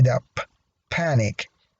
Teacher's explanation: There is a puff of air at the beginning of the word when you pronounce it. You can feel the puff of air if you put your hand in front of your mouth. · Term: aspiration